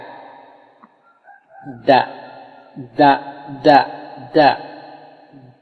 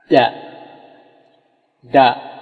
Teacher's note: Huruf D, tapi dia agak lidah itu agak keluar sedikit. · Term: dal